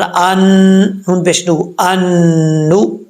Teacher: حمزہ نون زبر ان، نون پیش نو، ان نو، نون مشدد ہے تو 1 الف کی مقدار غنہ بھی کیا جائے گا، یہاں پہ ادغام بھی ہو رہا ہے، ادغام یرملون، اور بیچ میں نون ساکن جو ہے وہ گر جائے گا